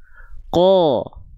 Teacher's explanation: ketika vokal A pangkal lidahnya tetap naik sehingga keluarnya vokal seperti O · qof makhraj pangkal lidah dan tetap menjadi tebal karena ketika vokal a-nya keluar, pangkal lidahnya naik sehingga keluarnya seperti vokal O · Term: huruf tebal